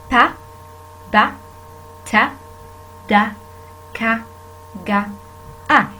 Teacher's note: The sounds that are happened in these stops: pa, ba, ta, da, ka, ga, a. When you try to pronounce these sounds, you will feel that the obstruction and the airstream is stopped completely, then released.